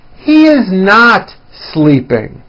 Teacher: notice how my voice comes down at the end of a sentence that is not a question